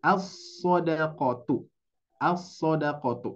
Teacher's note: langsung ke shadnya Jadi diidgamkan · Jadi langsung ke sodnya. Jadi diidghamkan Bapak Ibu sekalian. Maka terjadilah idgham. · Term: idgham syamsiyah